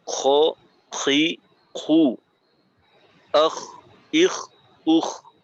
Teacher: ইস্তিআলা অর্থাৎ জিহ্বার গোড়াকে উপরের দিকে উঠানোর মাধ্যমে আওয়াজটাকে মোটা করতে হবে